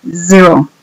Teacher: Para decir cero decimos zero, como que es un zumbido, como el que las abejas hacen.